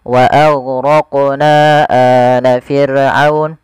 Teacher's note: Panjangnya 4 harokat atau 5 harokat, tidak boleh dikurangi. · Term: mad jaiz